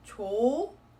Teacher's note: The H consonant does not get carried on.